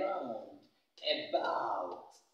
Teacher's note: The schwa can also be found in words like around, starting with A, around, about. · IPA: /ə/